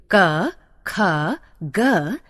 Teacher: क, ख, ग गले से बोले जाते हैं, अतः कंठ्य कहलाते हैं